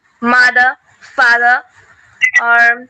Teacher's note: In UK pronunciation, R sound is not pronounced unless it is followed by a vowel sound.